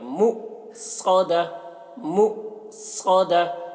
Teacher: حمزہ ساکنہ کے پڑھنے میں جھٹکا ہوتا ہے تو یہاں پر جھٹکا لگا کے پڑھیں گے، مؤصدہ، مؤصدہ، صاد